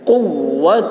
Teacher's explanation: قاف کی آواز موٹی ہوگی اور واو کے ساتھ سختی کے ساتھ ملائیں گے